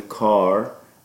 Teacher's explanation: the AH is a low back tense unrounded vowel